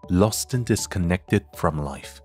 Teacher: 因为▁disconnected▁开头是▁d，▁所以▁and▁末尾的▁d▁失去爆破 · ▁以字母▁r▁结尾，其后▁own▁以元音音素开头，所以要连读，这种语音现象叫做▁linking▁r。▁而在美音中▁their▁以▁r▁结尾，自然就要和其后的▁own▁开头的元音连读，像这样▁their▁own,▁their▁own。▁同理之后的▁own▁和▁anxieties,▁anxieties▁和▁and,▁and▁和▁obsessions▁之间也需要连音。听到这你是不是恍然大悟，为什么外国人总是感觉说话好快的样子，就是因为他们的话语中自然而然的会有很多连音。请再听一下比较自然的读法，their▁own▁anxieties▁and▁obsessions。▁我们再来看后半句，▁leaving▁them▁lost▁and▁disconnected▁from▁life。▁这里▁lost▁末尾的▁t▁和▁and▁开头的▁a▁需要连读， 也请注意▁and▁在这里需要弱读